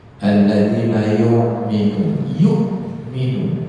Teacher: itu hamzah jangan sampai bunyi ain